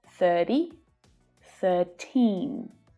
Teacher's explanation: It's really easy to confuse 13 with 30, okay? So in 30, the last syllable, the vowel sound, is a little shorter than 13.